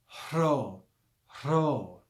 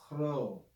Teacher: When you say this letter, what you should actually do is start with the sound of the H, the breath, and follow it with the R. Rho. That's the correct pronunciation.